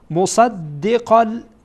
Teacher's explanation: این میگن که شما آشنا آشنایی دارید به این لام آمده بعد از تنوین لام بیایه چیکار میشه ادغام میشه چرا ادغام میشه؟ به خاطر که این لام از حروف از